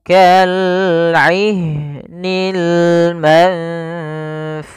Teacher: ikhfa adalah membacanya ke huruf yang setelahnya atau disamarkan ke huruf fanya